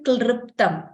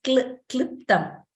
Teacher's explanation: And example of a word which has the swara L, kliptam, which means clipped, kliptam. So we don't say klriptam, it is kliptam. That R sound is not there.